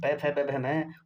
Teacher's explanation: ओष्ठ में आता है प वर्ग।